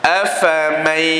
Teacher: Huruf fa sifatnya hamas, itu berangin.